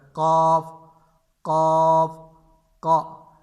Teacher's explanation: زبان کی جڑ جب تالو سے لگے تو اس سے قاف ادا ہوتا ہے